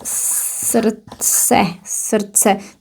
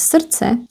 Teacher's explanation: The D here is not pronounced, so it's srdce.